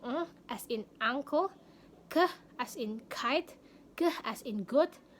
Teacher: dihasilkan Ketika anda mengangkat bagian belakang lidah Anda ke velum untuk memblokir atau membatasi aliran udara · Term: velar